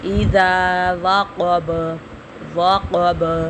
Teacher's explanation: الف مدہ ہے، اس کو بھی ہم کھینچیں گے، اذا وقب، کاف کو بھی پر پڑھیں گے اور با کے اوپر ہم قلقلہ کریں گے